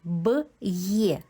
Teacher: Після апострофа звук є ми чуємо як два звуки. Звук й і звук е.